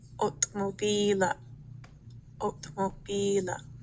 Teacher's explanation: So that second sound in there, ila, is long.